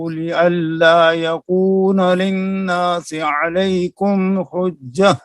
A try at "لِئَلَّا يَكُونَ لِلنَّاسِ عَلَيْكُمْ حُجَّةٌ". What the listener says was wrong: للناس کے اوپر غنہ کریں.